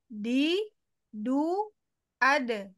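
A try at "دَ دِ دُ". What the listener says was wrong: Belum. Belum, belum, belum di makrot. Masih masih ke belakang. Ke pangkal ya, ke antara gigi dan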